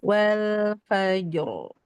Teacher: jimnya tipis dulu baru rnya tebal